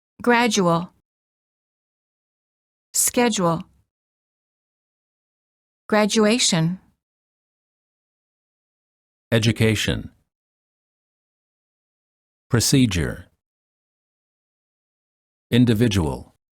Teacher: D plus U is usually pronounced as j, as in the word joke.